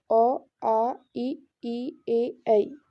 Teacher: इसमें हमारे होंठ बिल्कुल भी गोलाकार नहीं हो रहे हैं। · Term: अवृतमुखी